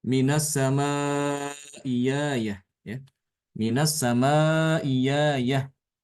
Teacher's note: maka hamzah kedua ini diganti dengan huruf ya, ya, ya fathah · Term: diibdal